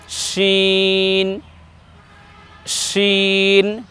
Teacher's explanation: উচ্চারণটি একটু বাতাস মোটা হবে বেশি বাতাসের সাথে উচ্চারণ করতে হবে